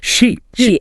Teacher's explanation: So when I say sheep, I should really stretch that e sound out a bit more than in ship. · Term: long vowels